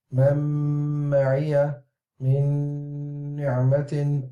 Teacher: Man ma'iyya min ni'matin, all of the sound is coming from the nose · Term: ghunnah